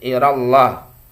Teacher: lafzul jalalah lafaz Allah dibaca tafkhim tebal